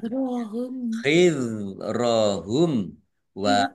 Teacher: Dzal sukun bukan kolkolah, jangan dipantulkan.